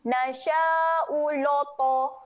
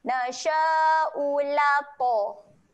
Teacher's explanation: Huruf lam ni adalah huruf yang nipis. Huruf to huruf yang tebal. Jangan bunyi dengan loto.